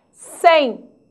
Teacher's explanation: o m tem som do I ditongo fonético